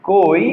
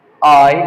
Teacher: সুতরাং এই জায়গায় আমরা একচুয়ালি যা পালাম তা ও আর ই এই ওটি হবে পূর্ণস্বর আর ই এটি হবে অর্ধস্বর